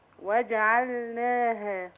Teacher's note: أحرص على بيان اللام الساكنة الواقعة في وسط كلمة جعلناها